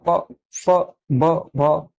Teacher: प बोल रहे हैं हम लोग तो होठों का प्रयोग हो रहा है, प फ ब भ, होठ का प्रयोग कर रहे हैं बोलने के लिए, तो ये ओष्ठ से इनका प्रयोग होता है, इसीलिए इनका उच्चारण स्थान ओष्ठ हो जाएगा।